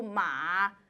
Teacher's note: tone three has has a little bit of creakiness to it